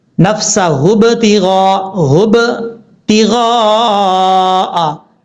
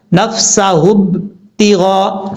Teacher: یہ جو ب کی آواز آ رہی ہے نا، یہ قلقلہ ہے